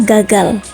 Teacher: huruf G seperti pada umumnya dengan ciri hidup, oral, velar, dan plosif